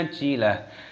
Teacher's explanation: Ajilah, taknya tak marbutoh, ketika berhenti waqaf maka tak marbutoh ini diganti dengan hak